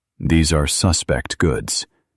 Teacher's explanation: In legal and procedural English, pay attention to the stress in this word. As a noun or adjective, the stress is on the first syllable.